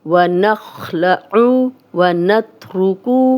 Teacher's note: عین کی پیش کو لمبا نہیں کرنا، اور عین کی کلیئر آواز ہے۔